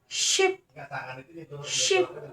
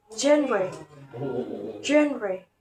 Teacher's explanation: Sh and j different voicing, where sh is voiceless and j is voiced. They are produced at the post-alveolar place and the manner is fricative.